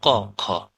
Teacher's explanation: হ্যাঁ, বাতাসে বাতাসে জোরে ঘষা খায় না, যেমন ক, খ। অনুরণিত হয় না, কম্পিত হয় না বাতাস, সেটা হচ্ছে অঘোষ ধ্বনি